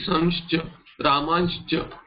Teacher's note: There will be no Nakara pronunciation, there will be a nasalization. Nakara will drop off and give way to a nasalization and a sibilant.